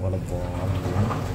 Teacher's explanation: waladdallin ini panjang sampai 6 harakat ya. Dhal panjang 6 harakat, kemudian linnya juga panjang 6 harakat.